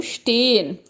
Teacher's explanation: Não é stehen, é stehen. Esse H tá alongando a vogal, então stehen.